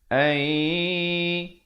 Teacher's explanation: Di sini hukum idgham bi gunnah, nun mati bertemu ya, masuk beserta dengung 2 harakat